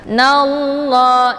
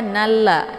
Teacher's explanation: untuk bacaan lafdzul jalalahnya dibaca tafkhimun mufakkamun, yaitu bacaan tebal karena sebelum lafdzul jalalah berharokat fathah yaitu na.